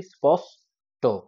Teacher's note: এখান থেকে আবার বলি, ওই যে স্পষ্ট শব্দের দন্তস্ব প, মূর্ধন্য ষ ট, মূর্ধন্য ষ ট কিন্তু কখনোই যুক্তধ্বনি নয়, কারণ উচ্চারণের সময় দেখো আমরা বলি স্পষ্ট, মূর্ধন্য ষ আর ট ভেঙে যায়, দল সীমা চলে আসে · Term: গুচ্ছধ্বনি